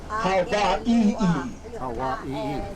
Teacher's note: You have to emphasize each vowel individually, even though it's in the word multiple times.